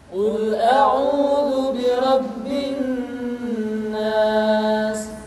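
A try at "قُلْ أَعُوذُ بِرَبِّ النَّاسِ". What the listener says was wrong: Tidak boleh dibaca Qul a'udzu birabbin nas, tetapi ditahan suaranya ketika mengucapkan nun tasydid seperti ini. Qul a'udzu birabbin nas.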